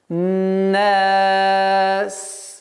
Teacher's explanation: Звук синь, свистящий звук. Нельзя прерывать резким остановкой, потому что свист прекращается, и произношение, правильное произношение звука синь невозможно будет.